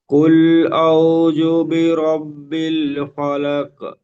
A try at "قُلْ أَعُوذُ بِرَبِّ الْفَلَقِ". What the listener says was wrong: কুল আউ, আইন পেশ, আরো একটু বেশি করে টান দিয়ে পড়বেন, একাধিক পরিপূর্ণ টান দেবেন। কুল আউ, আউ, আইন পেশ, একাধিক টান হবে।